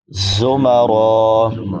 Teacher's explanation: زا سیٹی کے ساتھ ادا کیا جائے گا، را پر پڑی جائے گی.